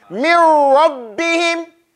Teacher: Dakhala shay fi shay. So the noon has completely entered into the ra. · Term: idgham